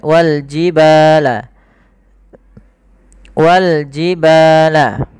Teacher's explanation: ada Mad thai'i panjangnya dua harakat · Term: mad tabi'i